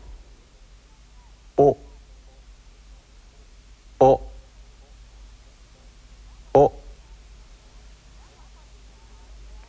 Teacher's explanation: the final Japanese vowel o is also sharp and short in duration